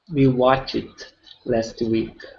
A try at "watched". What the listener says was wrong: Okay, almost. So right now what you're saying is watched. Okay, the E does not make a sound in that word. Okay, so we do not say watched, it's watched.